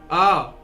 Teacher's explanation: विव्रत मतलब पूरा खुला हुआ हमारा मुंह हो जाएगा, और ये पश्च स्वर में आएगा।